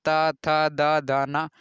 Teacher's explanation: जीभ हमेशा दांत में सट जाएगी